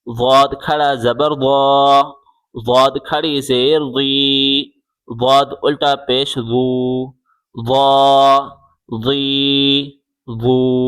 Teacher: زبان کی کروٹ بائیں یا دائیں طرف لگا کے پڑھیں